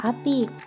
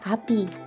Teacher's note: I tinggi atas depan tak bundar dan I tinggi bawah depan tak bundar